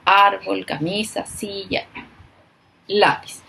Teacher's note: su sílaba tónica, es decir, donde marco la voz, donde la acentúo, es la penúltima sílaba